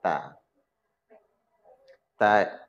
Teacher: ujung lidah bertemu gusi atas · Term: huruf ta